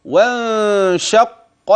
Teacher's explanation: النون التي اخفيت مع وجود غنه لوجود الشين بعد النون الساكنه فتنبه وانشق وانشق وانشق القمر احذر ان تاتي بالف في النطق